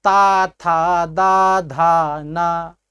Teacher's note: स्पर्श हो रहा है, दंत से हो रहा है। हमारी जिह्वा देखिए दांत से सट रही है।